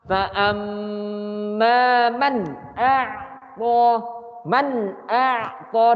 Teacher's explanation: Harusnya tidak boleh dengung. Yang dengung di mim yang pertama. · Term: izhar halki